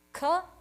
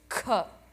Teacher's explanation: Alpa prana versus mahaprana. You need that extra breath. So one of the best examples is brahmacharya.